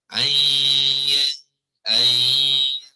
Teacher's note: So dari segi pergerakan lidah kita, ya, kita mengambil makhraj ya, bukannya makhraj nun. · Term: idgham